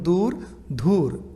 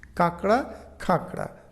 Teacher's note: অল্প প্রাণ ধ্বনি মহাপ্রাণ ধ্বনিতে পরিণত হয় যেমন দূর ধুর এখানে দ ধ তে রূপান্তরিত হয়েছে কাকড়া খাকড়া